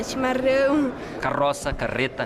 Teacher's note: o pessoal de são paulo capital curitiba e boa parte dos gaúchos faz o r com a ponta da língua